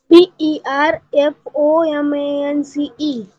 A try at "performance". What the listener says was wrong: See, performance madhe apan R cha uchchar jari karat naslo tari lihitana lihayacha ahe. Boltana fakta tela R la silent thevayacha ahe. Pan lihitana lihayacha ahe.